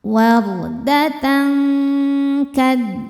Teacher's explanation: tanwin disamarkan ke kaf disertai dengung. Dengungnya besar.